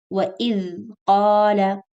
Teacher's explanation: the middle of the tip of the tongue is slightly out and pressing against the edges of the upper incisors. But you keep your tongue there, depend on the makhraj and use the voice. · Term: dal